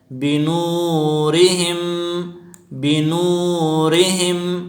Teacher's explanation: بنو میں واو مدہ ہے، اس کو ایک الف کی مقدار کھینچ کر پڑھیں گے، مدی اصلی سے کہتے ہیں۔